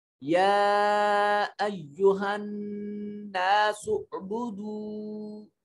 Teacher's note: یا کے اوپر شد بھی ہے اور کھڑا زبر بھی ہے، اس کو لمبا کریں گے. یا ایہا الناس اعبدوا، نون مشدد ہے، یہاں غنہ واجب ہوگا.